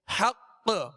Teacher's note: مشدد حرف جب اس پر وقف کیا جائے تو اس میں خوب قلقلہ ظاہر ہوگا، آواز جو ہے زیادہ لوٹتی ہوئی محسوس ہوگی